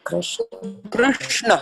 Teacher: when I say Krishna, there is no E sound. It's Ra. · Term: rukara